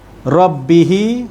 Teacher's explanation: huruf ra berbaris di atas ra tebal